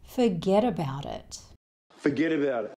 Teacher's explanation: we've got consonant sounds next to vowel sounds, so this tends to be said as one long word. And here, the t sound at the end of forget and about actually sounds like it's somewhere between a D and a T. · the 't' sound at the end of 'it' isn't really said.